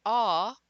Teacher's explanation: When you say aw, that sound is considered a back vowel because it's formed way in the back of your throat. It doesn't have far to get up through your nose and out.